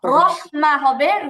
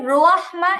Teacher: র জবর র হবে, রোয়া হবে না।